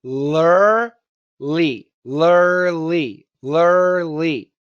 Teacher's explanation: what's important to remember when you're saying lurly, lurly, is the tip of your tongue never touches. Now, I'm doing a light L, so a light L never touches.